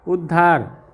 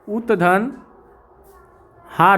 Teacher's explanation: त के बाद अगर ह आए तो त का द और ह का ध हो जाता है। त के बाद अगर ह आए तो ये ध्यान रहे त का द हो जाता है और ह का ध हो जाता है।